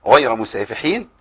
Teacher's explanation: الغين المفخمه غ والياء مرققه